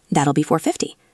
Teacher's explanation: He didn't say that will be. He said that'll be like one word.